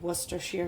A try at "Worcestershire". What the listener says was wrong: Worcestershire. It's not Worcester. It's Worcestershire.